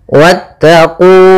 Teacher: Pada lafal wattaqu di sini wnya langsung ke huruf ta dan wnya tidak dipanjangkan